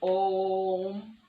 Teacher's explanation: इन प्लुत स्वर के उच्चारण में हर्ष स्वर से 3 गुना समय लगता है